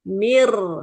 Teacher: mir itu dibacanya ron-nya tidak tipis, tapi kita mencekungkan ketika huruf ro sukun